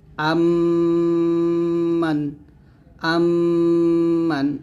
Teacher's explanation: দুই ঠোঁটে মিল করে গুন্নাটা আদায় করতে হবে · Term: ইদগাম গুন্না